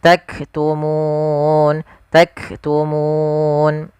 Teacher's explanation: Kemudian yang kedua sifat hamasnya yaitu tahan dulu suara kafnya karena dia sukun sebagaimana huruf ta, ak, baru nafasnya kita alihkan